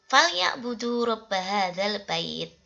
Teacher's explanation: al yang alnya disebut dengan al-qamariyah yang dibaca jelas alnya